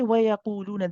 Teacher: when we say وَيَقُولُونَ, the qaf is heavy